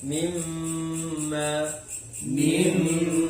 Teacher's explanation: Ketika kita membaca guna, mim bibir kan nempel, bibir atas dengan bibir bawah. Berarti makhrajnya mim sebetulnya.